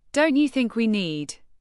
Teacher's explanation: the rising intonation invites agreement, gently encouraging reconsideration without forcing it.